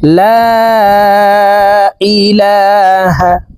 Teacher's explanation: লা এখানে 3 আলিফ টান হবে। মদের হরফের উপরে চিকন চিহ্ন, বামে হামজা, মধ্যে মুনফাসিল 3 আলিফ টানিয়া পড়িতে হয়।